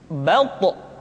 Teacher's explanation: dalam posisi sukun, to memiliki sifat qalqalah, sehingga suaranya mesti terdengar mantul